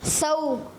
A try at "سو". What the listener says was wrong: زبان کو یہاں نہیں لگانا, زبان پیچھے رکھنی ہے. دونوں دانت ملے. سو. سو. دیکھیں دانت ایسے ملے اور زبان کی نوک بار قریب آ جاتی ہے, ایسے لگتی ہے.